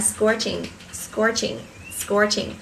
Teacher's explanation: Một số bạn mà đọc mà ẩu ấy thì miệng của chúng ta hay đọc là scot, nhưng mà cái từ này âm của nó là âm or dài